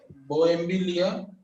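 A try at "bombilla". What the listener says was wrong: No bohem. Only Bombillia.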